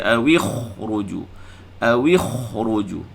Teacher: kha ini mesti disebut dengan tafkhim